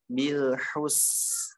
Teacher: Bil alirkan lamnya habis itu hu. Huruf ha ada desahnya. Bil hus. Habis itu sin ngalir.